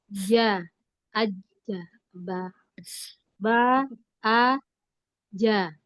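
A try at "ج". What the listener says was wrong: Iya, lagi kurang kuat jimnya. Nempelnya di langit-langit kurang kuat sedikit.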